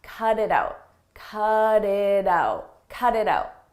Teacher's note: when a T comes between vowels, we change that to a d, a very soft D